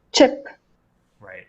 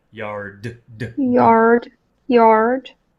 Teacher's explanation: So an unvoiced sound comes all from your mouth like the p in chip.